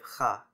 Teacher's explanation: shifted to the velar fricative /x/, which is uncommon among Romance languages